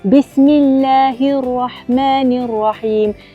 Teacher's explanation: huruf ra memang ada getaran tetapi tidak perlu berulang getaran tersebut. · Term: sifat at-takrir